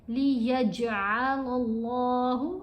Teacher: اللہ کی لام کو موٹا پڑھا جائے گا کیونکہ اس لام سے پہلے حرف کے اوپر زبر ہے